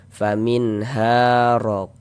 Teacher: Ha dibaca panjang mad thobi'i panjang dua harakat.